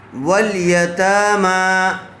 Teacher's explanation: واو کو ڈائریکٹ لام سے ملائیں گے، الف کو چھوڑ دیں گے، الف نہیں پڑھا جائے گا۔ الف لکھنے میں تو آئے گا لیکن اس کو پڑھیں گے نہیں، بلکہ ڈائریکٹ لام کو پڑھا جائے گا، واو کو لام سے جوڑ دیں گے، یا الف لام سے پہلے والے حرف کو جو ہے وہ لام سے جوڑ دیں گے۔ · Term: حروف قمری